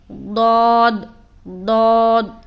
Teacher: اس کو ہم موٹا کر کے ادا کریں گے، اپنی زبان کا بغلی کنارہ کو اوپر کے داڑھوں کی جڑ میں سٹائیں گے